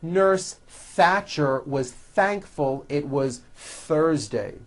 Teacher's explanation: notice how often my tongue comes out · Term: TH sounds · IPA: θ